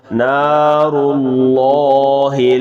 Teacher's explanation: لفظ اللہ کے لام کو موٹا کریں گے